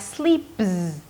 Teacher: So all of a sudden it's going to sound like sleeps. The P is going to sound like a B because one sound affects the other.